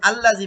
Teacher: জি জের বাম পাশে জজম ইয়া এক আলিফ টান দিতে হবে